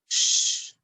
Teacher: No, you will not use your vocal cords. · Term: the sh sound